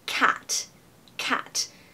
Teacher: make sure your a in cat is really at the back of the throat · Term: short a